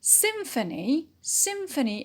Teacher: symphony is a noun and it is stressed on the first syllable